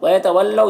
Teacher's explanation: واو ساکن سے پہلے لام کے اوپر زبر ہے تو واو لین ہوگا، اسے نرم آواز کے ساتھ جلد پڑھیں گے